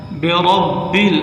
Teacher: برب را کو موٹا کریں، را کے اوپر زبر ہو پیش ہو موٹا کر کے پڑھا جاتا ہے